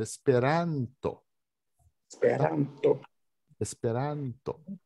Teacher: E não deve ser nasalizado o A. Não pode falar Esperanto, tem que falar Esperanto.